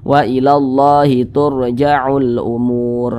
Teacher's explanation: Ada huruf ra sukun, di belakangnya ada tanda baca dhammah, maka huruf ra-nya dibaca tebal, dibaca tafkhim begitu.